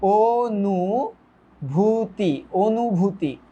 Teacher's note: ফার্স্টে তুমি বলো ও, নট অ।